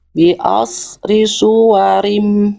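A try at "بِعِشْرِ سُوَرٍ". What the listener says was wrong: Nah, ini masih os. gimana shin Bunda? Ash. Ash. Ash. Ash. Shin sukunya jadi masih ibarat sinyal masih hilang-hilangan ya.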